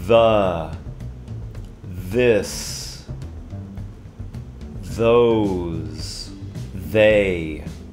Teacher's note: Comece com som de Z. Zzz, tem uma abelha no quarto. Zzz. Enquanto fazendo esse Z, de novo, coloque a sua língua entre os seus dentes. The, this, those, they, mas vai sair rapidamente. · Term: voiced TH